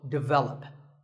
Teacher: English as develop but the first syllable is actually dick and the stress is on the second syllable